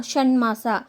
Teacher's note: ಹಾಗೆಯೇ ಮ ಎನ್ನುವಂಥದ್ದು ಯಾವುದಾದ್ರೂ ಒಂದು ಅನುನಾಸಿಕ ಆಗಿದೆ. ಹಾಗೆಯೇ ಇಲ್ಲಿ ಆದೇಶವಾಗಿ ಬರ್ತಕ್ಕಂಥದ್ದು ಟದ ಒಂದು ಅನುನಾಸಿಕ ಯಾವುದಾಗಿದೆ ಣ ಆಗಿದೆ